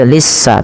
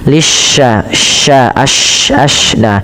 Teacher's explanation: Kemudian pada lafal shin, lisya ya, lisya tasydidkan sinnya, tapi hati-hati jangan sampai terbaca dengan sin, jangan dibaca lissa tapi lisya, sya pakai y gitu ya. Nah, ini untuk shin itu cara membacanya adalah di tengah lidah kita bunyinya